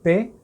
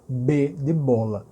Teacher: porque quando você disse pé não tem vibração nas cordas vocais diferentemente de quando você diz b de bola o p e o bebê são idênticos em praticamente tudo quando